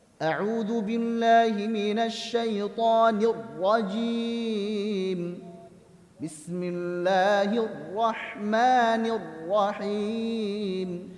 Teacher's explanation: Bukan pula terlalu menekan huruf ro. Jadi terlalu ditekan huruf rnya sehingga takrirnya hilang, tawasudnya hilang.